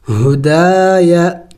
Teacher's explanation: دال کو ایک الف کی مقدار کھینچیں گے اس لیے کہ الف مدہ ہے ، الف سے پہلے جب زبر ہو تو اسے الف مدہ